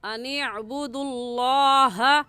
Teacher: दाल है और दाल के ऊपर पेश है, और कायदा है कि लफ्ज़ अल्लाह से पहले अगर पेश या ज़बर आ जाए तो उस लफ्ज़ अल्लाह को पुर यानी मोटा करके पढ़ते हैं, और मोटा करने का तरीका कि आपके दोनों होंठ गोल हो जाए